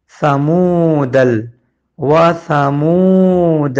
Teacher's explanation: میم واو پیش مو کو ایک الف کے برابر کھینچا گیا ہے کیونکہ پیش کے بعد جزم والا واو موجود ہے۔